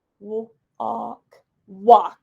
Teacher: AL is making the aw sound and the L is silent